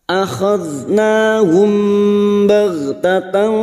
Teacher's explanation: Huruf gha bukan qalqalah, maka jangan sampai dipantulkan